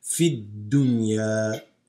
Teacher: This alif lam drops. You're going to go from here into the dal with the shadda.